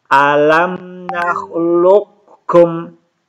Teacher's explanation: Jadi qafnya tidak diqalqalahkan lagi